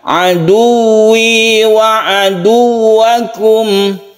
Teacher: Yang perlu kita perhatikan juga adalah tasydid ya. Tasydid wawu ini harus kita tekan ke wawunya.